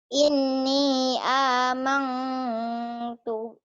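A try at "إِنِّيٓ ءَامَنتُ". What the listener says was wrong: aman, ada annya masih. Kalau nun mati atau tanwin ketemu kaf dan kop, engnya banget. Ini mah ini aman bindeng iya, ikhfa iya, samar iya. Tapi jangan amang, jangan ya.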